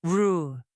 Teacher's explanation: the tongue curls slightly back toward the roof without touching it. The sides of the tongue lift, the lips round slightly, and the sound becomes deep and smooth. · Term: American R